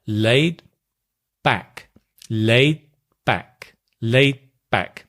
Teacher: can you hear the D disappears so we have this ellipsis where a sound is drop and · Notice also with laid back, the D in laid usually disappears. Laid, we don't explode. Laid, just keep it laid, and then close your lips.